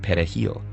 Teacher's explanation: Dominicans pronounce it pahil with a trilled Spanish R